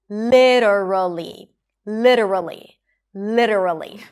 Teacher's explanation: LI - an L sound and an 'i' sound. And then the T becomes a flap T, and then a schwa: li-duh. And then we have an R and a schwa, a reduced vowel - 'ruh': li-duh-ruh, and then an L again - lee. · Le, an L sound and a I sound, le, and then the T becomes a flap T and then a schwa